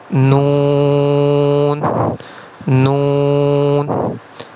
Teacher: نون کی ادائیگی اس وقت ہوگی جب زبان کی نوک یعنی زبان کا کنارہ ثنایا رباعی اور انیاب کے مسونوں سے لگے